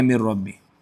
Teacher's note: نون ساکن کا ادغام را میں ہوگا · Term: ادغام تام